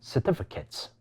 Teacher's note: 呢個字第1個同第4個音節都係屬於非重音，弱化變成▁schwa